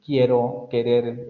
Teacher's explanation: el dorso de la lengua se sube hacia la zona del velo no hay vibración de cuerdas vocales entonces ocurre que se bloquea momentáneamente el aire y luego se